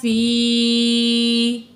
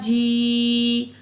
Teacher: یا ساکن ہے، ما قبل زیر ہے، یا مد ہے، 2 الف کے برابر کھینچ کے پڑھیں گے